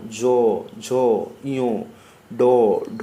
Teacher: এদের উচ্চারণে ঘোষ বা সুর আছে বলে এরা ঘোষ বর্ণ